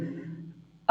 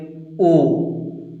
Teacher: तो देखिए आ बोलते हैं, ओठ की आकृति वृत्ताकार नहीं हुई, इसमें भी नहीं हुई, ई इसमें भी नहीं। ऊ देखिए ओठ की आकृति वृत्ताकार हो गई